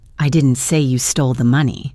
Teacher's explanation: Putting the little punch on the first word. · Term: emphasis on I